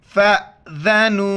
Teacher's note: ज़ाल के वक्त ज़ुबान बाहर निकालना है।